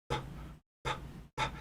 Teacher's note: These are bilabial, meaning you use both your lips.